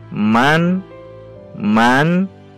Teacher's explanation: cara membacanya adalah jelas dan pendek serta tidak boleh dengung